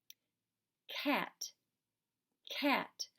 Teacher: K. It's not voiced. The back of your throat is closed. It closes at the back. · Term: k sound